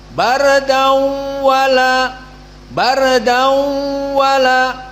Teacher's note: ini di dinamakan idgham tanwin kepada wau dau dan ada dengung dau itu ghunah masuk kepada makhraj hidung kisyum dan dibaca dengan dua harakat